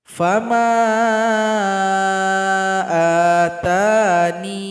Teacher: huruf iya-nya kita matikan, kemudian huruf nun yang berada sebelumnya dipanjangkan 2 ketukan.